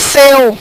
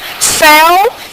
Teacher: Seu, ele tem um som fechado. E céu tem um som aberto. Céu, eu encontro vogal e semivogal num processo decrescente, ditongo aberto e decrescente.